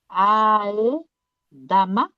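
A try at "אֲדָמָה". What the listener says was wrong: Non, c'est un A qui est là. Adama. Adama. Il n'y a que des A.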